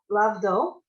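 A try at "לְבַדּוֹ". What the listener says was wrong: Not la. It's just l.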